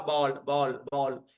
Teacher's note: ये आ के और ओ के बीच की ध्वनि है, मतलब ना तो ये आ है ना ओ है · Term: गृहीत ध्वनि